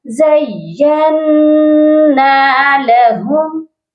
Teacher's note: نون کے ساتھ الف مدہ بھی ہے، تو اس کو ہم نے ایک الف کے برابر لمبا بھی کر کے پڑھنا ہے